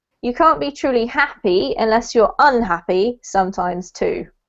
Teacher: you can focus a lot of emphasis on the UN because you're contrasting it with happy